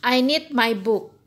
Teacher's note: anda harus naik sedikit di awal kemudian turun sampai titik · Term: falling intonation